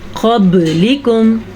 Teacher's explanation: قاف کو پر بھی پڑھنا ہے کیونکہ قاف ہمیشہ ہی پر پڑھا جاتا ہے اور یہ حروف مستعلیہ میں سے ہے.